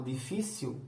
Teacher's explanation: quando eu falo difícil, eu não estou usando um L no final, eu estou usando uma semivogal